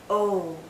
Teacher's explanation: in boat boat oh this is another long vowel sound Oh our lips are very rounded but it's more open